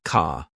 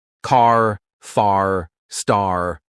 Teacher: British people say car like ca, but Americans, oh no, they stretch that R sound